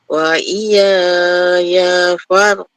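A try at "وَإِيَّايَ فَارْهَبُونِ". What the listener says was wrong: Okey, kena bagi penekanan pada ya sabdu. Dia ada sabdu kan? Dia guna dua kali. Dua kali.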